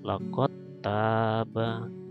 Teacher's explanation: dal sukun bertemu dengan tak. Maka dal sini dihilangkan, dibaca lakot taba gitu, ya. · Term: idgham mutajanisain